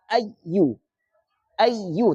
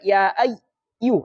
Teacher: Ya dan wau dalam keadaan bertasdid ada namanya kaidah nabr kita tekan sedikit ya.